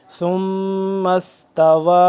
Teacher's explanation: غنہ ہو رہا ہے، ثم استوى، واو کھڑا مد زبر وا، یہاں پہ مد کی وجہ سے لمبا ہو رہا ہے 2 سے 3 الف کے برابر